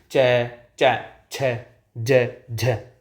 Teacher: कुछ घर्षणों के साथ वायु बाहर निकलती है। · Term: स्पर्श संघर्षी